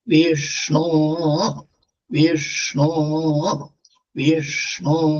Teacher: അപ്പൊ വിഷ്ണു ശബ്ദം എപ്പോഴും ആദ്യുദാത്താണ്.